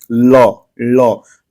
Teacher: जो ल होता है यह पार्श्विक होता है · जो पूरा जीभ का जो अगला सिरा है वो पूरा जो है आपके तालू को पीछे की तरफ टच कर रहा है या छू रहा है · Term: पार्श्विक ध्वनि